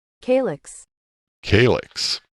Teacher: Calyx is how it's said, 2 syllables, stress on the first one